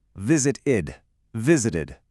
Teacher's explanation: The verb visit already ends in a t sound. So, to make it easy to say, we have to add that extra syllable. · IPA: /ɪd/